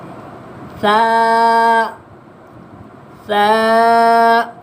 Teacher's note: سا میں سیٹی نہیں آتی، اس کو زبان کے کنارے پہ رکھ کے ادا کرے، اپنی زبان کو دانتوں کے کنارے پہ رکھ کے ادا کرے تو آپ سے صحیح ادا ہو جائے گا۔